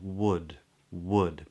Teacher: the lips stay there in a rounded position